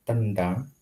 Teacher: maka akan terasa bahwa N itu ketika lidah sebagai artikulator menuju ke titik artikulasi itu ada di posisi agak belakang, tidak murni apikudental. Itu karena dipengaruhi oleh D yang retroplex ya istilahnya. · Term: dipengaruhi oleh lingkungannya